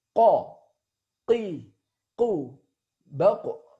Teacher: Huruf qaf ya, dikeluarkan dengan cara menyentuhkan pangkal lidah paling belakang dengan langit-langit bagian belakang